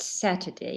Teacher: three syllables the first one is stressed